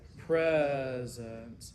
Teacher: the first E would be an open E because it is the syllabic stress